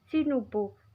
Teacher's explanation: Cara baca vokal A sama dengan tulisan fonetiknya, yaitu dibaca O.